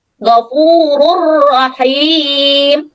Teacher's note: Tanwin dimasukkan ke dalam huruf ro dan suara tanwinnya hilang. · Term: idgham